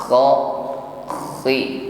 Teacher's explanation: tetap ada bunyi dengkur pada huruf kha ya